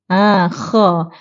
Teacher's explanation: Sebab tengah lidah Walaupun pangkal lidah terangkat, tapi tengah lidah dia tak menghimpit ke lelangit. Kha. Tengah lidah masih terbuka, ruang di situ masih terbuka. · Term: infitah